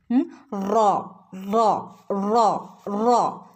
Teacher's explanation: അതിൻ്റെ ഒരു ശബ്ദം വരുന്നത് നാവിൻ്റെ അഗ്രത്തിൻ്റെ പുറം ഭാഗം, നാവിൻ്റെ അറ്റത്തിൻ്റെ പുറം ഭാഗവും മേലെ മോണയും. നാവിൻ്റെ അറ്റത്തിൻ്റെ പുറം ഭാഗം എവിടെയാ തട്ടുന്നത്? മേലെ മോണയിൽ തട്ടുന്നു.